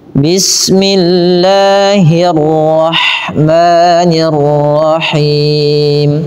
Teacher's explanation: bila huruf lafal Allah didahului dengan kasrah maka dibaca dengan tipis.